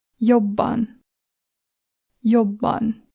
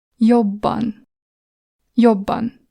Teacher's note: the double version is pronounced like this. Jobban. Jobban. So you press it longer.